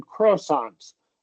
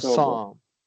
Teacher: Well, you didn't mispronounce it necessarily, but it sounded like you said croissants. You emphasized the first syllable, and we want to stress the second syllable. Croissant. Yeah, croissant.